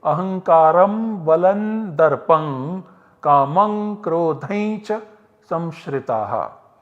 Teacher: Although the Parasavarna is not done in the Bhagavad Gita, those who recite Srimad Bhagavad Gita tend to pronounce this anuswara as a Parasavarna by making the optional Parasavarna sandhi.